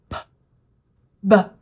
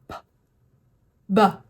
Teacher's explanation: Anytime you see one of my letters and it's got that little cloud right next to my lips, that means it's going to be fast. So again, your lips will start closed. They will pop open with a little puff of air.